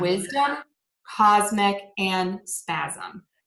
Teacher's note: we are going to say a Z for the letter S before a voiced sound in words like wisdom, cosmic, and spasm.